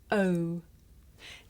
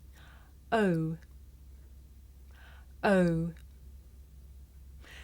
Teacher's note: This is a diphthong, a double vowel sound. The shape the mouth makes changes from the beginning of the sound to the end. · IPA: /əʊ/